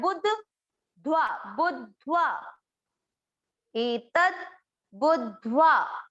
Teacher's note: इसका उच्चारण 'बुधवा' की तरह न करें, सिर्फ 'बुधवा' न कहें, ऐसा न करें। आधा 'डा' भी सुनाई देना चाहिए। आधे 'डा' का उच्चारण करने के लिए, इसे 'बु' के साथ पढ़ा जाता है। · आधे 'दा' को 'बु' के साथ मिलाकर 'बुध' पढ़ा जाता है। ध्व 'बुध्व', 'दा' और 'धा' दोनों का उच्चारण स्पष्ट रूप से सुनाई देना चाहिए।